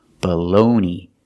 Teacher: the first vowel is not stressed so it has a short sound it's a schwa